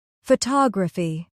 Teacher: Photography. Stress on the second syllable. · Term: word stress